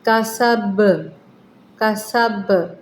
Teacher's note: وقف کی صورت میں ہم پڑھیں گے، با کے اوپر جزم آ جائے گی، قلقلہ بن جائے گا، با کے اوپر جزم ہو تو قلقلہ والے حروف، کسب، کسب۔